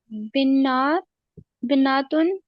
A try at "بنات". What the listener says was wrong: کیوں پڑھنی ہے بنت؟ بینا تن، بنا نہیں پڑھنا، بینا. بینا